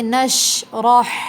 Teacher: ہا حلق سے ادا ہوگا، واضح ہا پڑھیں گے